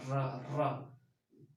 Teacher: र क्या है, लुंठित वर्ण है, यानी र का उच्चारण करते समय र है लुंठित ध्वनि या लुंठित वर्ण है, यानी र का जब आप उच्चारण करेंगे तो उच्चारण करते समय जीभ जो है वह लड़खड़ाती हुई उच्चारण करती है, जैसे र। समझ में आ रहा है, र का उच्चारण करके देखिए, र, जीभ जो है लड़खड़ाती हुई आ रही है, इसलिए इसको क्या बोलते हैं, र को लुंठित वर्ण बोलते हैं।